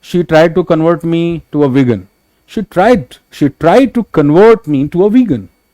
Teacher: while this word is being used as in verb, your stress will be on the latter syllable. Word इसीलिए Capitals में लिखा हुआ है मैंने, कि आपको ये बात समझ में आए कि कन्वर्ट, it's not like she tried to convert me.